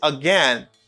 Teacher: stress and again is in the second syllable i say again this is the reason why i have a rising intonation because of again